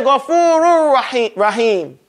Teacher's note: what makes these expressions unique is that this ha has to come with some strength. So if you use all your energy in saying Ghafurur, you won't say him properly.